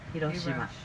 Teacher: if you want to know how we pronounce the word, the name of the city, we say Hiroshima, very flat